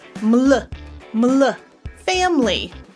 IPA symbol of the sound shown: ml